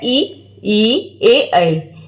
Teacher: अग्र स्वर यानी जिसमें आगे का भाग काम करता है